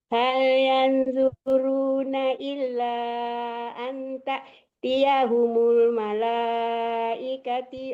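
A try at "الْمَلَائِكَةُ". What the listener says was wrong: Ikatu. Ikatu ya, bukan ikati ya.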